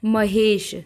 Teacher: महा शब्द की अंतिम ध्वनि आ तथा ईश शब्द की पहली ध्वनि ई परस्पर मिलकर ए हो जाती है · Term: संधि